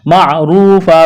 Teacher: وَقُولُوا لَهُمْ قَوْلًا، قاف واو زبر قو، قاف کو موٹا کرنا ہے، واو ساکن سے پہلے زبر، واو لین بغیر کھینچ کے پڑھنا ہے، تنوین کے بعد میم ہے، ادغام کریں گے، غنہ کریں گے، یہاں پر معروفا، را کو موٹا کرنا ہے، واو مدہ ہے، ایک الف کے برابر کھینچنا ہے، وقف کریں گے، دو زبر کی تنوین کو الف سے تبدیل کرنا ہے۔